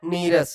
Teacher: मतलब हटाना विसर्ग का लोप हो जाना मतलब गायब हो जाना विसर्ग का लोप हो जाता है तथा जो विसर्ग के पहले ह्रस्व था उसका दीर्घ हो जाता है